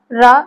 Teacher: रा का जो उच्चारण स्थान है मूर्धन्य है।